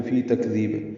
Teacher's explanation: ذال نرمی سے پڑھیں گے لیکن لمبا کریں گے، اور با ساکن پہ قلقلہ کریں گے، یہ وقفن ہے